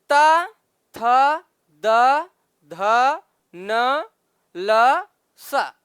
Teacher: यानी कि इन वर्णों का उच्चारण करते समय जिह्वा हमारी जिह्वा दंत भाग को यानी दांत को स्पर्श करती है, वो चाहे ऊपर के दांत हो चाहे नीचे के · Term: दंत वाला